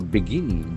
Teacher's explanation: Begin has got accent on the second syllable.